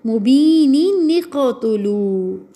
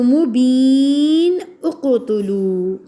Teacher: مبین کا نون تو پڑھا ہی جائے گا، نون قطنی بھی پڑھا جائے گا فار جوائننگ لائک وصل